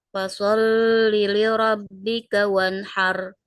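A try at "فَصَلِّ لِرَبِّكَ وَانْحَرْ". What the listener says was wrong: Lamnya jangan berlama-lama. Fasalli li rabb, jangan berlama-lama. Terus roknya tebalkan.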